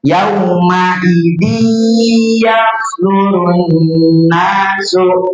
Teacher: Tanwinnya dimasukkan ke dalam huruf huruf ya. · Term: idgam